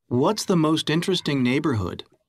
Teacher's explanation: notice how the final st is linked to vowel sounds